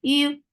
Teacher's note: it's very soft for dhamma circular lips. The sound is short.